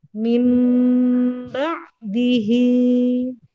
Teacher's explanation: mim dan ba itu di dua bibir yang di katupkan atau ditutup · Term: iqlab